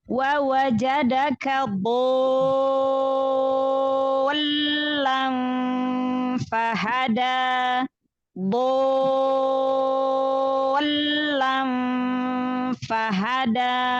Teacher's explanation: Huruf sebelumnya di sini huruf dhad. Huruf dhad adalah huruf tebal, huruf isti'la. Maka alifnya juga tebal.